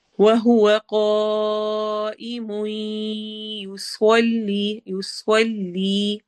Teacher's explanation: و ہونٹ گول ہوں گے، ہوا ہونٹ گول ہو کر ہی واو کا مخرج ادا ہوتا ہے، وا نہیں پڑھنا، وا پڑھنا ہے، وا بولنے سے ہی اندازہ ہو جاتا ہے۔